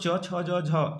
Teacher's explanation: च वर्ग को तालु से बोलते हैं